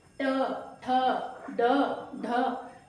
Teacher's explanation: जीभ की नोक मुड़ती है और मुड़कर जो आपके मसूड़ों का साथ वाला पार्ट है उसको टच करती है, उसको स्पर्श कर रही है। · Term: मूर्धा या मूर्धन्य